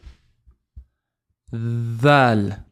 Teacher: dal is the tip of the tongue touching the teeth here. And is a vibrant sound.